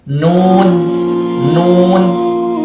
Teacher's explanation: huruf nun ini maksudnya itu keluar dari ujung lidah